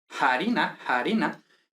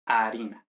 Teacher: Primero se aspira en la Edad Media y luego ya desaparece esa aspiración